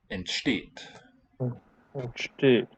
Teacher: the ENT prefix on the verb is never stressed.